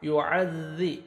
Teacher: ذال پڑھنا ہے، زا نہیں پڑھنا، زور سے نہیں ذال کو ادا کرنا ہے، نرمی سے ادا کرنا ہے